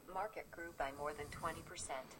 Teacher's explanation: you heard it started high, then went down, so it wasn't completely monotonic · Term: prosody contour